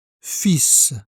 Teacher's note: Dans ce mot, on prononce le S final.